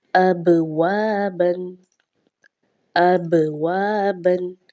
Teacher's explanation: با چونکہ ساکن بھی ہے اور حروف قلقلہ میں سے بھی ہے تو آواز جو ہے وہ جنبش سی ہوگی